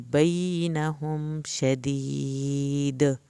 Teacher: دال پہ قلقلہ کرنا ہے کیونکہ حروف قلقلہ ہے